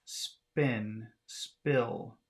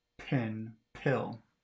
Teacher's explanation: the P of spin spill which has no aspiration